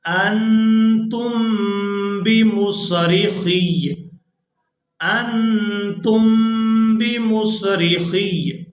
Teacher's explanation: خی یعنی سختی کے ساتھ اس کو ادا کریں گے وقف کرتے ہوئے بھی